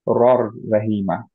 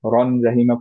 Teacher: ফুল merge তার হবে। মানে নুনটা কমপ্লিটলি গায়েব হয়ে গেল, নুনের গুণনাটাও থাকবে না। তার ফলে আমরা পড়বো হচ্ছে রর রাহিমা।